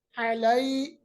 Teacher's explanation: یا ساکن ما قبل زبر، تو یا لین ہے، ملائم آواز کرنی ہے